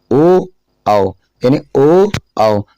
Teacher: ओ आओ, यानी ओ आओ, दोनों होठ मिल रहे हैं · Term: कंठोष्टम